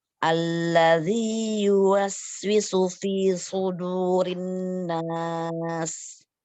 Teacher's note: Tebal lagi sodanya. Sudu baru dalnya tipis.